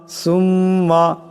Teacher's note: সা মিম পেশ সুম মিম জবর মা সুম্মা এখানে মিম মুশাদ্দাদ মিম মুশাদ্দাদকে এক আলিফ পরিমাণ গুণনা করিয়া পড়তে হবে